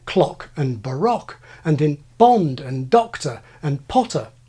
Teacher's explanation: General American simply lacks the historic short O sound that survives in my kind of accent